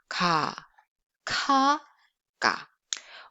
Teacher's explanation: All of them are pronounced around your back of your mouth, soft palate around here. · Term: velar sound